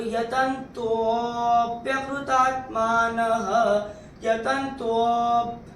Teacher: तीसरे चरण में यहाँ पे जो आपको ये एस दिख रहा है इसको अवग्रह कहते हैं। इसमें एक विलुप्त अ होता है, तो आपको थोड़ा सा खींच के बोलना है।